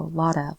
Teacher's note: the ending sound is a T, but you can hear that it rolls